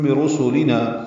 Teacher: سین صفیر کی آواز سے پتلی آواز سے پڑھا جائے گا